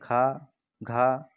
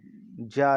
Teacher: जा ध्वनि महाप्राण की ध्वनि नहीं है। महाप्राण उच्चारण में हकार जैसी ध्वनि विशेष रूप से रहती है।